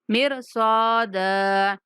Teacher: صاد کے بعد الف مدہ ہے، صاد کو پورا بھی پڑھیں گے اور تھوڑا کھینچ کے بھی پڑھیں گے